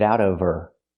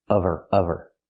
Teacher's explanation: we need the V sound in of because we don't pronounce the H in her. We link the sounds.